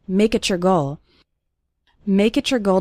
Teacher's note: when we have a word ending in tea followed by the word you or your it often sounds like a CH sound